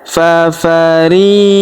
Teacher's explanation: Kemudian fafariqan. Perhatikan huruf ri kita panjangkan 2 harokat karena terdapat ya sukun di depannya. Fafariqan.